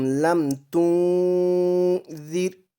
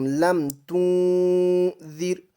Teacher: اخفا کے 15 حرفوں میں سے آ رہا ہے، لم تنذر، اس را کو بالکل باریک پڑھیں گے